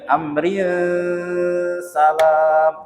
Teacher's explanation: kalau nak nyambung, amrinnya di ikhfa ke. Dia dengung ya, amrin salam, jangan amrin salam, salah. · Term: ikhfa hakiki